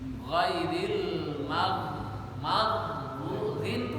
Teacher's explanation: Ghin ghairil maghdhin itu di atas tenggorokan adnal halki